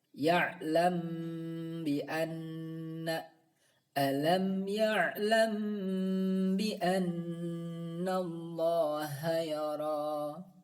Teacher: suara mim sukun tersebut dibaca ikhfa, yaitu antara izhar dan idgham sambil didengungkan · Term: ikhfa syafawi